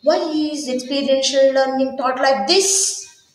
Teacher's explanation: the speaker can use the raising tone on the word this to express surprise or disagreement